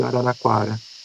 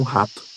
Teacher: um R pronunciado muito rápido, como de araraquara. É muito diferente de um R de como rato, né? Araraquara é pronunciado muito mais rápido, por isso se chama explicativas, né? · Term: TAP